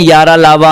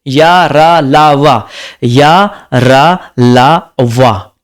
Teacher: दंत, तालु और ओठ के अपूर्ण स्पर्श से बोले जाते हैं, और ये अंग उच्चारण में मिलते हैं अवश्य, किंतु पूर्ण रूप से नहीं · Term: अंतःस्थ व्यंजन